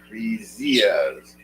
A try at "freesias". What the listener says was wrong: Free. Not. It's you don't pronounce the Z. It's like a J. Fresias.